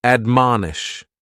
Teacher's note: The first word is to admonish. And admonish has three syllables and the stress is on that second syllable